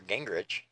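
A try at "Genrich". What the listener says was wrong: You probably all know this, but it is Genrick, not Rich. It's Genrick. It's pronounced like it's an R-I-C-K. It's spelled with an H, but it is pronounced Genrick. I didn't know if you were trying to do it on purpose because some people do that, but it's Genrick.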